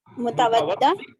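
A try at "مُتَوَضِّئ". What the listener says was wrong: متودع نہیں ہوتا، دوت کو زیر ہے. متودی زیر ہیں.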